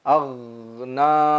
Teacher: huruf gha mengalir, aghna, jangan memantul, kita baca ag, tidak dibaca dengan qalqalah